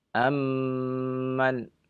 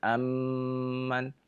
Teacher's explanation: mim bertemu dengan mim, maka kita tekan kedua bibir. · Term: idgham mimmi